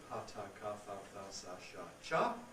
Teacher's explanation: All of these are, shall we say, normally voiceless. They have the vocal folds in the open position. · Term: voiceless group